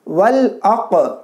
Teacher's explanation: قاف میں جزم آ گیا تو یہاں پر قلقلہ کرنا ہے